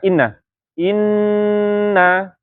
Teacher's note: yang pertama yang kadar gunanya sempurna itu ketika dia tasdid ataupun idgham